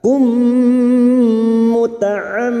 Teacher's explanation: mim yang bertasdid gunnah musyaddadah, kita dengungkan selama 3 harokat